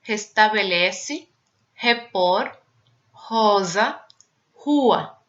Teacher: esse R no Brasil é pronunciado como um J do espanhol quando a pronúncia for forte. Por exemplo, no começo de palavra, ou sílabas depois de consoante e quando aparecer graficamente RR, duas R's.